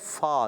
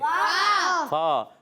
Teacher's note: فا کا مخرج اوپر والے دانتوں کے کنارے جب نیچے والے ہونٹ کے تر حصے سے لگتے ہیں تو ادا ہوتا ہے فا.